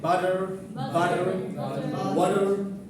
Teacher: But in America, they'll say butter, water. D, not T sound. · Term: flap